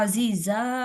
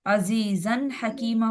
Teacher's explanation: दो जबर पर जब हम वक्फ करते हैं ना, तो तब वो अलिफ पढ़ा जाता है, वैसे वो अलिफ पढ़ा ही नहीं जाता, हम कंसीडर ही नहीं करेंगे।